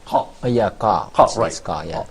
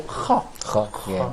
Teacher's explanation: So both of them have the same place of articulation, which is uvular. So I can say confidently that is ha is a voiceless, and also it's produced by the uvular part of.